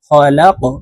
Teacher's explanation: কফ দাল জবর কাদে লাকাদে, তারপরে শব্দে দেখুন এই যে কফ হরফ আছে, কফ হরফ কলকলার হরফ উপরের দিকে ধাবিত করে ধাক্কা দিয়ে উচ্চারণ করব